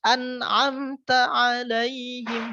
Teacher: An'amta itu kan idhar ya. Mati bertemu dengan ain. Jadi harus jelas.